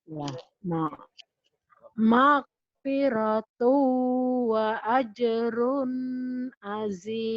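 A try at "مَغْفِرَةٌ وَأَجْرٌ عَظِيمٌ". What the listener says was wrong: Ronnya jangan ditahan karena idhar. Jadi kalau mau ngelagu nih Bu, magfiratu di to-nya idgham biguna boleh ditahan. Tapi di ronnya wa ajrun azim idhar. Tanwinnya ya Bu ya.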